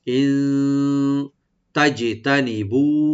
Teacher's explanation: মানে হলো যদি, ইন এখানে আমরা নুন সাকিন একফা করবো, আমরা একটু গুণা করবো, লাইট গুণা করবো